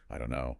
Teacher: the T in don't is almost always silent in that phrase in natural speech and the vowel sound weakens to that uh sound